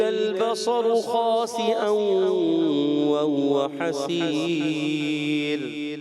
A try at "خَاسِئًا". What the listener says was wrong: خاسئا ایک الف کا غنہ بھی کرنا ہے پیارے بچے